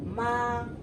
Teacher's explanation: ma is high and flat